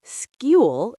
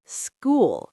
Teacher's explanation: Some people say skewl instead of school. The oo sound changes because of the L that follows it.